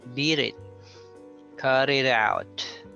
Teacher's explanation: the first word ends with a t and the next word begins with a vowel so what happens is that t becomes a soft d so you say beat it cut it out so you notice